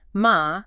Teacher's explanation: A falling rising tone, ma, means horse.